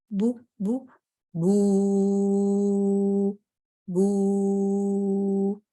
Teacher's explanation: ये मेरे होंठों से अदा हो रहा है, लेकिन इसकी आवाज जब मैं लंबी करती हूँ तो फिर वो अलजौफ से आएगी, बू बू बू बू।